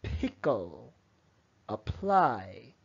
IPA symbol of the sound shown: pʰ